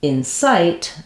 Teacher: we have second syllable stress site is longer and in is shorter